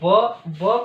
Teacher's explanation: व का जो उच्चारण स्थान होगा दंतोष्ठ, दंत और ओष्ठ दोनों से मिलकर इसका उच्चारण होता है।